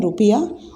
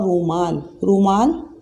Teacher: ज़्यादा वक्त लग रहा है इसमें, ज़्यादा टाइम लग रहा है बोलने में, ज़ोर ज़्यादा लग रहा है ऊ को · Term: दीर्घ स्वर